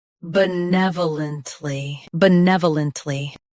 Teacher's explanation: Stress nev. Keep bu soft and lunt smooth.